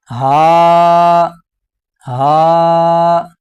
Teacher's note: حمزہ اور ہا ان دونوں کا ایک ہی مخرج ہے، یعنی حلق کے نیچے والے حصے سے ادا ہوتے ہیں۔